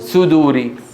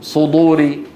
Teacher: اذا قال سدور رقق الصاد واذا قال صدور فخم الدال